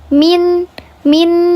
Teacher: gunnah yang kurang sempurna, 2 harokat saja ditahannya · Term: gunnah yang naqis